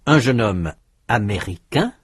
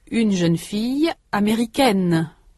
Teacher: have a final consonant n that masculine forms do not furthermore in the masculine form the final vowel is nasal in the feminine form it is not